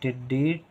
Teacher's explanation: डी देर तक आवाज आ रही है टी में टी कम देर के लिए है तो कम देर के लिए तो छोटी इ की मात्रा टिडी